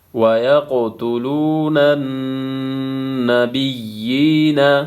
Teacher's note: پہلے پیش ہے، اس کو ایک الف کے مقدار کھینچنا ہے، نون مشدد ہے، یہاں پہ غنہ ہوگا، یا کے نیچے کڑی زیر ہے، ایک الف کے مقدار کھینچنا · قاف ساکن ہے، یہاں پہ قلقلہ ہوگا،